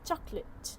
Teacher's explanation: The middle vowel is compressed or dropped for fluency, a common native speaker trait that is often picked up by ESL learners in informal environments. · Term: elision